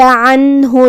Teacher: ہم یہاں نون ساکن کو ظاہر کریں گے اور بغیر غنہ سے یہ حکم کو ادا کریں گے